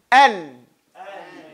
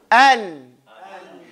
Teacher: Your tongue is up and to the front, the ghunna in the nose. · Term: noon